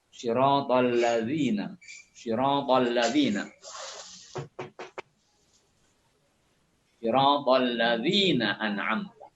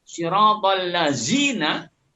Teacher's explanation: Zal itu kan kita tahu tipis sekali menyebut alladzina